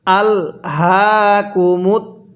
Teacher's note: র এর উপর পেশকে বাদ দিয়ে দিব ওয়াকফের কারণে